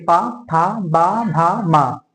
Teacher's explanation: इसमें हमारी ओठ सट रहे हैं ना, ओठ, तो इसीलिए इसको कहते हैं ओष्ठ से बोले जाने वाले वर्ड।